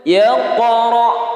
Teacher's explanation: contoh ba dalam keadaan sukun harus dipantulkan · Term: qalqalah